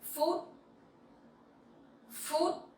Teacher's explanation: So PH sound you pronounce like F sound in English, and it sounds similar with food, right? But with dấu sắc you have to go up a little bit, and the tone has to be very strong